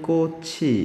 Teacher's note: 꽃이 할 때 뒷소리 이가 소리값이 없기 때문에 연음되는 거죠.